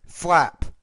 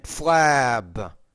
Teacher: you have the P at the end as a voiceless consonant, so the vowel is shorter, flap. But the B is a voice consonant, flab.